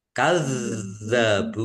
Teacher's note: dalalnya ada tasdidnya juga ditekan dan ditahan